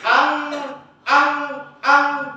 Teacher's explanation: Bil jumpa dengan Kaf kena dengungkan dia dua harakat